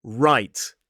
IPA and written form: raɪt (right)